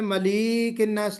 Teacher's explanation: لام کو تھوڑا سا آپ نے کھینچ دیا ہے